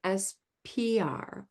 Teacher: you have your lips rounded with the P, and you're going to have to pull them back and retract the tongue as well.